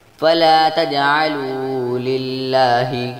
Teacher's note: جیم ساکن ہے جس لیے جیم پر کلکلہ ہوگا، اور لام پر کھڑی زبر ہے جس لیے کھڑی زبر کو 1 الف کے برابر لمبا کریں گے۔